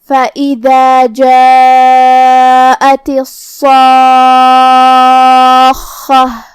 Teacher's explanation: پھر حرف الخاء ہے اور اس پہ تشدید ہے تو 2 حرف کے برابر ہمیں حرف الخاء کو بھی پڑھنا ہے. خاء بھی حروف تفخیم میں سے ہے تو ہم خاء کو بھاری آواز میں پڑھیں گے